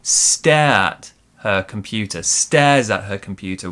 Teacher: Stares at her computer, we stress stare.